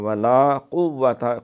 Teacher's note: قاف کڑاکا نکال کے، وہ قاف کاکے والا نہیں پڑھنا، قاف کتے یا کشش والا، بلکہ قوت والا۔